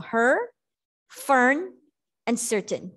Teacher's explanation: You don't really pronounce the R so much. The R is controlled. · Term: R controlled vowel